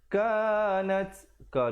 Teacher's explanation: Daripada in jadi ing 2 harakat, kanat ka 2 harakat, dan nat ada hamasnya bunyi angin di situ.